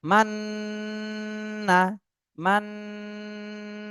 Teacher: তাসদিদ থাকলে আপনার দুই ঠোঁট মিলায়ে তারপরে গুন্না করতে হয় কিন্তু নুনে তাসদি থাকলে ঠোঁট মিলানো যাবে না শুধু মাননা ঠোঁট ফাঁকা রেখে তারপরে কিন্তু গুন্না করতে হবে